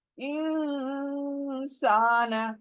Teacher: इक्फा rule आया है, इक्फा यानी नून नाक में चली जाएगी, इंसान। जब भी इक्फा करोगे आपको 1-2 सेकंड के लिए नून को आवाज को नाक में रखना है ले जाकर, साना बाद में पढ़ो लेकिन नून को रखो, देखे, इंसान बाद में साना, तो पहले जो रूल है उसको पूरा करो।